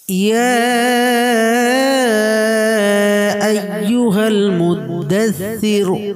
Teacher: ইয়া এটা মধ্যে মুনফাসিল হবে, 3 আলিফ পরিমাণ টানবো।